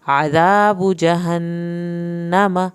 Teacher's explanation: नून की शत पे एक अलिफ के बराबर देर लगाएं, मीम की ज़बर को लंबा हरगिज़ यहाँ करें।